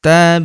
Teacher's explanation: huruf ba berharokat sukun kita pantulkan atau kita qalqalahkan